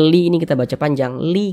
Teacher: Mad thi'i panjangnya dua harakat